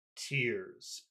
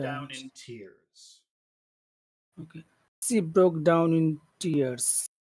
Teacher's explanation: Yeah, the falling tone is serious.